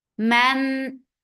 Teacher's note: This is ikhfa and this ikhfa is light. So keep your tongue straight. Jab for fatha open jaws attached with ba.